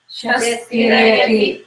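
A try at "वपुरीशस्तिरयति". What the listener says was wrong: Shastirayati. Again, you are not applying the half. You forget about how it is written in Sanskrit. You land on the S. அந்த லெட்டர்ல இருந்து is நீங்க வெளியில எடுத்தா பாக்கி என்ன இருக்கு? Tirayati.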